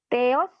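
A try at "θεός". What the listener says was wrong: Theo, nggak pakai os.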